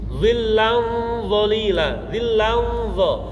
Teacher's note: Ikhfa yang tafkhim karena mengikuti huruf yang ditemui adalah dha, berarti pangkal lidahnya ikut menaik